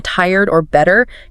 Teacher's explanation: listen for that soft, maybe slightly curled R sound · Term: English R